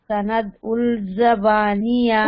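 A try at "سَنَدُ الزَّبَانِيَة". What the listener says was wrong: उल नहीं बोलेंगे ना, सनद उल नहीं बोलना। लाम के ऊपर तो कुछ भी नहीं है, जा के ऊपर शाद है, जा से मिलाना है। सनद उज जबानिया,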